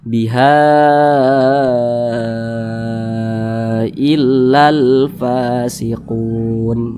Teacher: di atas ini panjangnya 4 harakat boleh lima harakat juga boleh panjangnya itu empat harakat atau kira-kira empat ketukan boleh juga lima harakat atau kira-kira lima ketukan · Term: Mad Jaiz munfasil